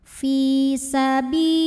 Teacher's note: Maka cara bacanya alif lam tidak kita baca atau diidghamkan. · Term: alif lam syamsiyah